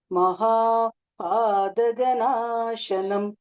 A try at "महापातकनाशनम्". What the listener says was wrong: பாத்தக இந்த த கொஞ்சம் தெளிவா வரணும்.